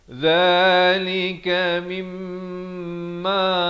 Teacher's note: Mim itu kena dengung ya. Mim sabdu wajibul gunnah, wajib dengung 2 harakat